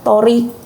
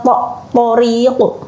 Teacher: Nah, itu to itu dibaca tebal.